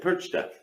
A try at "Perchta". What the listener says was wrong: Yeah, but you don't have the R sound. Percha.